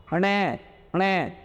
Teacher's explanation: देखो, णे णे, तो ध्वनि नाक से भी निकल, ऐसे समझो जैसे आवाज़ नाक से निकाली जा रही हो। ठीक है, इसलिए अनुनासिक वर्ण भी कहते हैं।